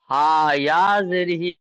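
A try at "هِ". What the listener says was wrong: হা ইয়া বলেছি আমি একবারও? হা জের হি, জের জের হা জের হি,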